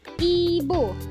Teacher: Kita belajar yang I kecil terlebih dahulu. I kecil posisi lidahnya itu tinggi atas depan dengan posisi mulut tertutup.